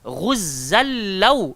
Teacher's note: dia idgham bila gunnah, memasukkan tanpa dengung. So bunyi dia adalah ghuzzal law.